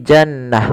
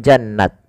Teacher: dirubah menjadi huruf ha sukun